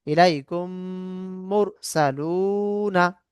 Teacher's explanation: মিম সাকিনের পর মিম আসলে প্রথম মিমকে দ্বিতীয় মিমের সঙ্গে মিলিয়ে গুন্না সহ পড়তে হবে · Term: ইদগামের সাফাবি